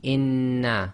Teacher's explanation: as so essentially you pronounce the first no s and then the sound of the second noon comes directly out without taking a pause or breaking the sound · we've got to effectively merge the two Nunes together and hold it for a little bit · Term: germination